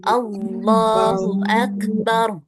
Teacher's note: Jadi jangan terlalu panjang. Ya, jangan Allahu Akbar itu kepanjangan. Bacanya dua harakat aja.